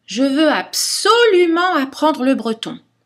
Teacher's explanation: il faut monter avec l'intonation et augmenter l'intensité de la voix c'est à dire son volume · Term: accent secondaire d'émotion